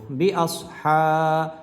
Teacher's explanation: সদ হরফটা মোটা করে উচ্চারণ করব